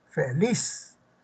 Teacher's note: en este caso es palabra aguda porque la sílaba tónica es Liz